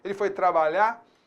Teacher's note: Então aí, nesse caso, como na linguagem coloquial, a gente às vezes corta o R